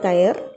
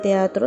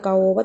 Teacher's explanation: una separación de dos vocales abiertas igual es la palabra teatro las dos vocales son abiertas y hemos debido de separarlas porque se pronuncian en golpes de voz diferentes separados y se ha producido un hiato la palabra caoba también hay